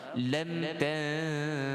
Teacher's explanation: Jadi ta fathah bertemu nun sakinah, iaitu nun mati bertemu ta. Itu hukum bagi kita kena dengung tuan-tuan, wajib dengung.